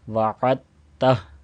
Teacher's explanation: دال کو حذف کر دیا جائے گا، یہ سائلنٹ ہو جائے گا. وعدتہ، عین کو تا کے ساتھ ملایا جائے گا، اور آخر میں چونکہ ہا ہے اور اس کو ساکن کر کے پڑھا جائے گا۔